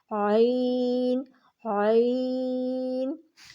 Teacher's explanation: عین جو ہے وہ وسط حلق سے آپ نے نکالنا ہے، اور اپنی زبان کو جو ہے وہ پیچھے کی طرف تھوڑا سا دھکا دینا ہے، اور وسط حلق سے آپ نے آواز نکالنی ہے۔